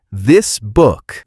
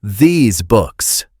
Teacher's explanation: For the word this, we use a very relaxed, short sound, like in the word sit. · We need that bright, smiling, long E sound, like in the word see. · that short I versus the long E sound